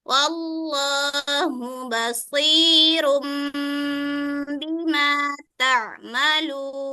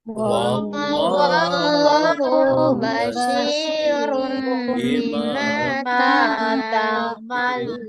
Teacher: Yaitu apabila nun sukun atau tanwin bertemu dengan huruf ba. Cara membacanya dengan menukar suara nun sukun atau tanwin menjadi mim. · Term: iklab